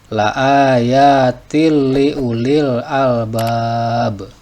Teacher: Nah, di sini perhatikan nama tajwidnya adalah idgham bila gunnah sebab tanwin kasroh menghadapi huruf lam dan bacaannya tidak didengungkan atau tidak ditahan tetapi langsung.